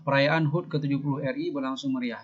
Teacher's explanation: intonasinya menurun dalam lisan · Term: kalimat berita